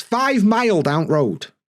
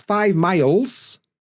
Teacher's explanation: We often drop the S, the plural S.